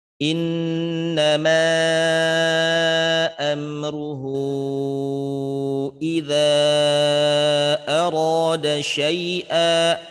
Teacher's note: Ketemu dengan mad jaiz munfasil, ketemu dengan madsilah tawilah, maka kadar panjang bacaannya dibaca dengan 4 harokat.